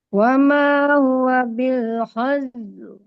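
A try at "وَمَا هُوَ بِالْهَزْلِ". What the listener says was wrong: Nah, ini L-nya harus jelas kayak tadi. Hazl. Hazl.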